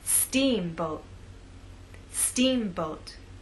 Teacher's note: making the first part of the word louder longer and at a higher pitch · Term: stressed part